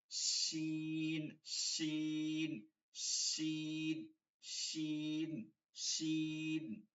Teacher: জিহ্বাটা কোথায় লাগবে? উপরে। মাঝখানটা ফাঁকা থাকবে, নিচের দাঁত লাগবে না।